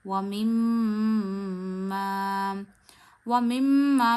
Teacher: जब मीम पे और नून पे तशदीद आती है तो गुन्ना होता है, यानी मीम की आवाज़ आप नाक में ले जाके 1 उंगली जितनी ठहराते हैं। ये हर उस मीम में होगा जिस पे तशदीद होगी।